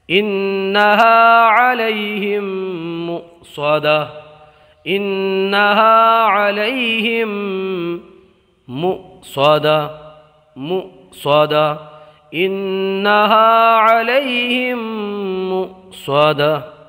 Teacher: یہاں حمزہ کو جھٹکا دے کر کے پڑھیں گے، اس لیے کہ حمزہ ساکنہ کو ہمیشہ جھٹکا دے کر کے پڑھا جاتا ہے۔ · اس نون کے اندر گنہ ہوگا، اس لیے کہ نون مشدد میں مشدد ہمیشہ گنہ ہوتا ہے